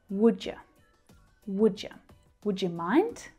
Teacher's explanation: Can you hear that schwa sound at the end as well? Because you is the unstressed word, we reduce it down to the schwa.